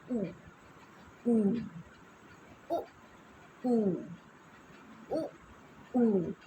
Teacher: जब भी होठ आपका गोल होगा ऐसे ऊ, इसमें दांतों की इस्तेमाल नहीं हो रहा है